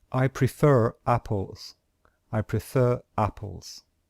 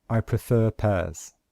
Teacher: So we have the sound at the end, and the little R means we only pronounce the R at the end of prefer if the next word starts with a vowel. So if we say this, since the next word starts with a vowel, then we must pronounce this letter R.